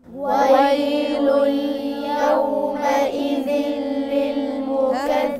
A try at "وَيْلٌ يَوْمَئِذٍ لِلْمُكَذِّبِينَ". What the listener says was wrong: لا لا لا لا لا، يومئذ للمكذبين وقفش عليها، ده إدغام بدون غنة. إدغام بدون غنة.